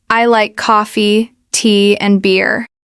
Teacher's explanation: And a third common pattern is in lists. When you have a list of things, it often goes up up and then down on the last item.